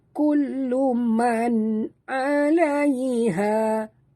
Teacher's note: Kullu man. Okey, di atas nun ada sukun. Jadi kita perlu baca dengan jelas tanpa dengung, izhar halqi.